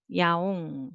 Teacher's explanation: initial place, zero consonant doesn't have sound value, but as a final consonant it has ng sound